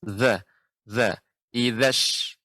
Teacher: Za adalah ujung lidah mengenai gigi seri atas